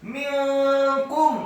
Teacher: Wa may yaf'alhu minkum, kata minkum, mimnya dibaca kasrah satu harokat, nun yang sukun bertemu dengan huruf kaf, hukum bacaannya adalah ikhfa, samar-samar. · nun yang sukun bertemu dengan huruf kaf, hukum bacaannya adalah ikhfa, samar-samar. minkum. Kemudian kafnya dibaca dhamma 1 harokat, mimnya dibaca sukun.